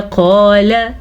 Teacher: क़ाल हमने अलिफ को खींच के पढ़ा, क़ाफ को मोटा पढ़ा, लाम को हमने नहीं खींचा क्योंकि लाम के ऊपर सिर्फ ज़बर है